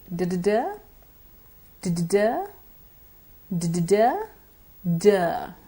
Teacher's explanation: the tongue has to strike the teeth ridge in the same manner as in the T sound. The D sound is simply a voiced sound, so it has more vibration, or it is heavier than the D sound.